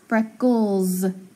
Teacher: It makes the Z sound instead of the S